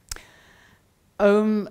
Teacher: Om is interesting because it's really all the vowels except E, ow, and then a nasalization